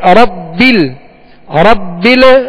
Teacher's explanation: ربل یہاں قلقلہ نہیں کریں گے، ربل آواز ہلے نہیں